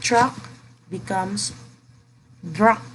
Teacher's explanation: voicing of initial consonants